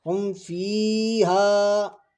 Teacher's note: اب دیکھو یہاں پر جو ناظرین ایک چیز یہ سمجھنی ہے ہم کو، یہاں پر اظہار شفوی ہے، یہاں پر اظہار ہوگا، یعنی کوئی ناک میں آواز نہیں چھپے گی اور یہ نہ کھنچے گا